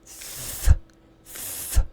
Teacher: It's a whispery sound, made without using your vocal cords. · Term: unvoiced TH